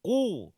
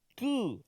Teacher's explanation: Kalau qaf dalam lagi dekat dengan anak tekak. Qu.